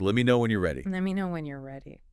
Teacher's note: Let me shortens to let and you are contracts naturally to your